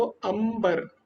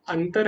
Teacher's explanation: जो तवर्ग है उसके लास्ट में त थ ध ध न आता है, इसलिए न की तरह उच्चारण हुआ।